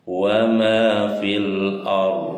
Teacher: Jadi alif lam qomariyah, lamnya dibaca jelas ya, atau izhar qomariyah.